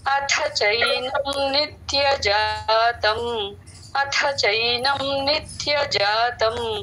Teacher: అథ థ పలకాలి త థ లో రెండవ థ మహాప్రాణం